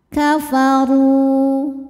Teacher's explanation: huruf ro dibunyikan secara tafkhim karena ro berharakat dah maka ro ditebalkan